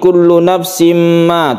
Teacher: tanwin bertemu dengan mim kita sebut dengan Idgham Bighunnah kita dengungkan